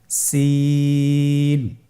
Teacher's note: জিহ্বার আগা সামনের নিচের দুই দাঁতের প্যাড ও আগার সঙ্গে লাগিয়ে উচ্চারিত হয়। জায়ের মতোই, জায়ের যে মাখরাজ সিনেরও একই মাখরাজ।